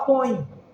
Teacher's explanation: Já viu, por exemplo, quando você vai falar põe isso aqui, esse põe, você percebe que o E está com som de I